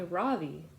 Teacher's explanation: In America, people call me Ravi, with the stress on the first syllable.